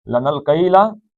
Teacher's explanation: نون آگے لام میں چلا جائے گا